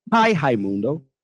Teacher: this R sound, especially at the beginning of the word in Portuguese, it sounds like an H in English.